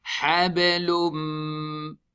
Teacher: So we join the lam into Mim with Ghunna. Means we take the sound to the nose and stretch it. Habalum. Mim, Nun, Kasra, Min.